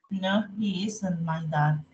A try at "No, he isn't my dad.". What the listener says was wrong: Okay, perfect.